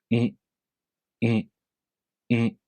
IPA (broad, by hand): N